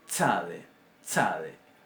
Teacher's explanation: Este sonido básicamente lo vamos a transliterar como una TS y se puede entender y analizar perfectamente como una sucesión de una T con una S